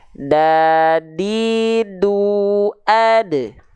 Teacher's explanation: Nah, ini gigi seri atas kita bagian dalam, ini gigi seri atas kita bagian luar. Nah, huruf dal itu disentuhkan ke pangkal gigi seri atas kita.